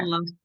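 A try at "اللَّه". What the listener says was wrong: Jadi bibirnya jangan ditarik turun. Allah. Bukan Allah. Allah. Turun. La. Lo. lebar, lah, turun. Jangan ditarik ke sana, turunkan. Jadi makhraj itu kita kan cuman buka gini, dibuka, nah kan buka di depan, kemudian dibulatkan gini kan, kayak gitu. Jadi jangan ditarik. Allah, fau. Dot di sini, fau, bukan fau. Nah, Maela di sini, Maela di sini. Nah, jangan diginiin lidahnya. Al ditempel ke atas, al, la, al, al. Lidahnya tempel semua, lidah lebar ke sini, 8 gigi depan atas. Al.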